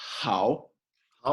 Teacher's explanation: the third tone is down and up